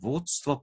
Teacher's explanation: d je zveneč, pol pa pride nezveneč